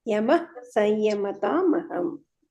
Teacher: ವಿಸರ್ಗ ಇದ್ರೆ ಅದನ್ನ ಯಮಹ ಅಂತ ಪೂರ್ತಿ ಹೇಳಬಾರದು